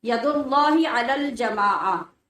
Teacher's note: جب ہم وقف کریں گے نا، رکیں گے تو جماعتن یا جماعتن نہیں بولیں گے، جماعہ بولیں گے